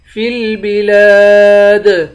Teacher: فا کو لام سے ملائیں گے، فی البلاد، لام کے بعد الف ہے، الف حروف مدہ ہے، اس کو ایک الف کے مقدار کھینچ کر پڑھیں گے۔ آخر میں دال حروف قلقلہ ہے، یہاں پر قلقلہ کریں گے